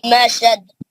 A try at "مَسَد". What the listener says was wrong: مسد خلقلہ کریے نا.